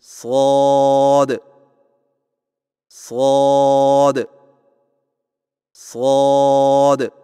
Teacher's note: صاد کی ادائیگی میں زبان کی نوک کو سامنے والے نیچے کے دو دانتوں کے کناروں سے مضبوطی سے لگا کر اور زبان کے پچھلے حصے کو تالو کی طرف بلند کرتے ہوئے موٹی اور سیٹی جیسی آواز میں پڑھیں